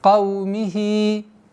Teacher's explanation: Здесь слитная долгота в размере 2 огласовок, естественное удлинение. Удлиняем кясру.